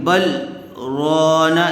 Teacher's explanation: دیکھیے یہاں پر لکھا ہوا ہے سکتہ، تو جب اس کو پڑھیں گے بل رانا، یہاں پر تھوڑا سکتہ کریں گے، یعنی تھوڑا رکیں گے لیکن سانس نہیں لیں گے